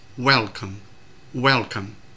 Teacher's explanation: từ welcome thì trọng âm rơi vào âm tiết thứ nhất